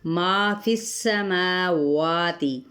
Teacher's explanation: ما فی السماوات، ما پہ الف مدہ، فا کی زیر کو سین کے ساتھ، سین پہ سیٹی کو واضح کریں گے